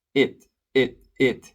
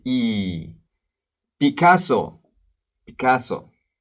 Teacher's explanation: e is a long e e like C in English C it's a long e in Spanish we don't have a short I so we don't say it it it we say e Picasso